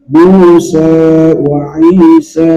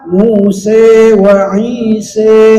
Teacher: Yang baca dengan taklil Musa wa Isa. Ada yang baca dengan imalah Musa wa Isa, lebih miring, lebih imalah dia. Tapi kita ini untuk hafaz patah Musa wa Isa, 2 harokat.